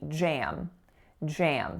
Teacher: So one syllable. The first consonant is a voiced j sound, and then the following vowel is a, and it's going right into an M.